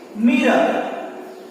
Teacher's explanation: So at the end, you could see the letter R, but we do not have to pronounce it.